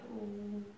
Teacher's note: आणि जेव्हा ऊ म्हणणार आहोत तर ऊच्या वेळी आपल्या ओठांचा थोडासा गोलाकार होणार आहे